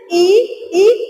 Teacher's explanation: आपकी जीभ आपके तालु को स्पर्श कर रही है, तो दूसरा उच्चारण स्थान आपका क्या हो जाएगा, तालु।